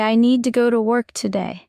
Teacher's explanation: Stress falls on need. Go work.